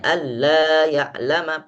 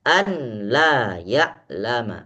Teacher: nunnya hilang masuk total ke dalam la ke dalam huruf lam Alla langsung dibaca Alla tidak bisa dibaca Alla didengungkan itu salah